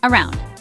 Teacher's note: It is a two-cllable word. Stress is on the second syllable.